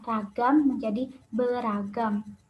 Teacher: Yang pertama, pelepasan fonem R pada prefiks ber itu terjadi apabila bentuk dasar ragam diimbuhi dengan fonem R. Contohnya, ber ditambah fonem ragam menjadi beragam.